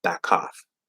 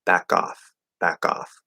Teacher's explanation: The K in cough is a strong K, but when K connects over to a vowel, it's going to become a weak K